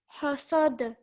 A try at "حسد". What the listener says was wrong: This ha has to come from your throat, so it's a bit stronger.